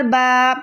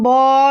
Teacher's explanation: اس کو ہم بو نہیں پڑھیں گے، اس کو ہم با ہی رکھیں گے کیونکہ یہاں پر با باریک ہے، با پتلا ہے